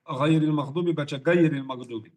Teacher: Tapi di ghain akar lidah bertemu langit daging. Jadi kalau kita baca qaf, qa dari sini, ghain dari sini, dekat atau jauh?